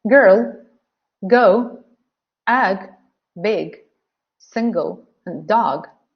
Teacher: the G sound is a voice sound because the vocal chords here they vibrate